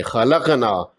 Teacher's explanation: اس میں الف سے پہلے نون پر زبر ہے، 2 لمبا کریں گے، خلقنا۔ اور قاف، موٹا قاف مجزوم ہے، یہاں قلقلہ بھی ہوگا۔ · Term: مد اصلی